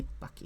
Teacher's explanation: Vip has a p at the end, so the stress goes there.